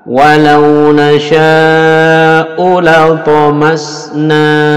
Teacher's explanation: U-nya pendek saja langsung disambungkan ke la